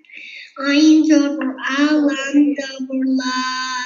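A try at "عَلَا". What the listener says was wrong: No, lam. No lam jabur la, lam khara jabur. This is vertical jabur. Lam khara jabur la. Ala.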